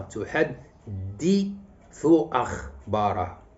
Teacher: تحدث هذا مقطع ثلاثي. إذا النبر غادي يكون على الدال وعلى الهمزة